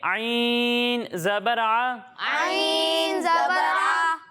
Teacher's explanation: जब हम आइन की अदायगी करेंगे तो इसे हलक के दरमियाने हिस्से से पढ़ेंगे